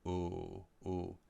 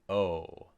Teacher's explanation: the jaw is a little closed with the ooh, and your lips might be sticking out a little bit more